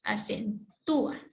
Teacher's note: Ya, aquí está la mayor fuerza de voz, ya, acentúa. Y la U es la vocal débil, y como es la que se pronuncia con más énfasis, se escribe la tilde